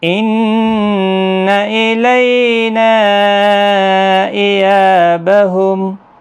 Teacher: إِيَابَهُمْ کو جلدی پڑھیں، یہاں پر اگر آپ سختی کے ساتھ پڑھیں گے گویا کہ آپ نے تشدید لگا دی